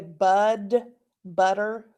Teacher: in oklahoma especially we say bud butter sounds like a d but it's actually a t